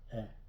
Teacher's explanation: There's the open E like in bet, eh.